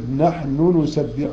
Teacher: نحن نسبح ده مثلين كبير، وحفص لا يضغم هذا النون، ويظهر يقول نحن نسبح، ويظهر النونين